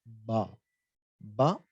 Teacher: you're obstructing the flow of that sound by closing your lips